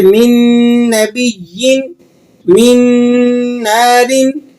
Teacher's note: ये इदगाम बिल गुन्ना होगा, गुन्ना के साथ इदगाम किया जाएगा